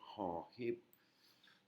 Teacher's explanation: Hon hip, c'est un H inspiré, c'est de l'air qui sort de la gorge.